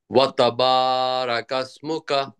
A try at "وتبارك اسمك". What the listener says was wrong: রাকাস না, রকাস রকাস।